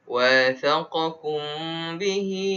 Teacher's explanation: Wathaqakum mim mati bertemu dengan ba, hukum dia apa? Hukum dia ikhfa syafawi. Kena dengung.